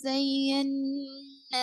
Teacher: نون پہ شدہ ہے اس لیے غنہ کریں گے. نون اور میم پر تشدید ہو تو غنہ کریں گے.